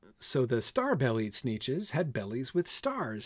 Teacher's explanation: that's anapestic tetrameter four anapestic feet unstressed unstressed stressed per line